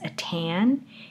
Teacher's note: the timing between the noise spike and the appearance of the vowel sound is longer for the t, compared to the duration, the amount of time between the noise spike and the onset of the vowel for the d. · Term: voice onset time